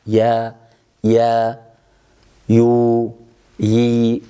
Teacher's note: عندما تكون متحركة فإن عندنا انفتاح أكثر وخروج واضح مع تصاعد وسط اللسان نحو الحنك الأعلى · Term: الياء متحركة